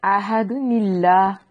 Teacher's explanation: جب اس کو نیلا پڑھیں گے تو یہ جو حمزہ ہے یہ درمیان سے گر جائے گا، پھر ہم اس کو یعنی یہ جو لام ہے اللہ کا اس کو باریک پڑھیں گے۔ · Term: حمزہ وصلی